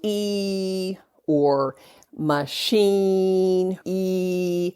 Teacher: You're having a tight smile, and your tongue is high and your jaw is high. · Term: high vowels